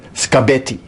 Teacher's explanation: in scabetti as she said it the k is voiceless and the b is voiced